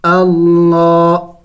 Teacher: پھر لام کے اوپر کڑی زبر ہے اور کڑی زبر کو ایک الف کے مقدار کھینچنا ہوتا ہے، لمبا کرنا ہوتا ہے.